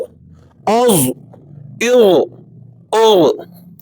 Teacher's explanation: ذو کو آپ نے پر کر کے ادا کرنا ہے، موٹا